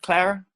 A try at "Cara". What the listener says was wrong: Cara. Cara? There's no L.